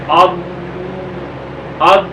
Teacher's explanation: اس میں وہ آواز کیونکہ اس کا مخرج لمبا ہے اور زبان کا بغلی کنارہ جو ہے وہ ان داڑوں کے ساتھ لگتے لگتے ٹائم لگتا ہے، جس کی وجہ سے یہ حرف جو ہے ضاد وہ اپنے مخرج میں اس کی آواز لمبی ہو جاتی ہے